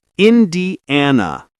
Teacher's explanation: Smooth linking between D and an.